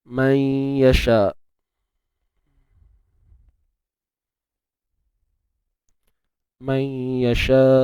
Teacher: So, apa yang dimaksudkan tidak sempurna di sini ialah kita memasukkan bunyi nun ke dalam ya tetapi bukan secara keseluruhan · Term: naqis